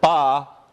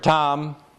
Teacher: You know, like these just sound like words that aren't English to us because I'm saying a voiceless stop without aspiration at the beginning of an onset. In Thai, these are different words.